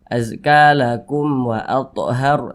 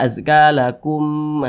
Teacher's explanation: Ini huruf mim sukun berjumpa dengan huruf waw, bukan huruf ba, bukan huruf mim, maka hukumnya izhar syafawi, dibaca jelas tidak berdengung. Pendek saja.